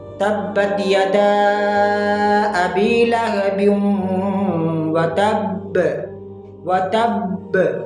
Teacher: قلقلہ اکبر ہوگا، یعنی سب سے بڑا قلقلہ ہوگا